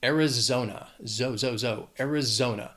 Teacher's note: It has 4 syllables. The stress is on that third syllable.